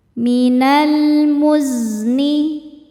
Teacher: Cara bacanya lam sukun dibaca dengan jelas atau disebut izhar qamari